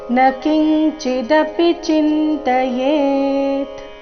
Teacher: ಈ ಚರಣದಲ್ಲಿ ಎ ಮಾತ್ರ ದೀರ್ಘ ಮಿಕ್ಕಿದೆಲ್ಲ ರಸ್ವ ಇದೆ